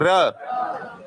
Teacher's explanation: र का उच्चारण करोगे तो ऐसे लगता है जैसे थोड़ा सा कंपन हो रहा है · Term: लुंठित व्यंजन